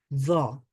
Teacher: যে এখানে আমরা দেখতে পাচ্ছেন জ, জ উচ্চারণ করার সময় কিন্তু দাঁত ব্যবহার করতে হয়। জ, দাঁতের সাথে জিহ্বাটা লাগাতে হয়, তখন গিয়ে জ উচ্চারিত হয়।